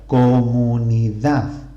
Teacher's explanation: la palabra comunidad tiene la sílaba tónica al final de la palabra por lo tanto es aguda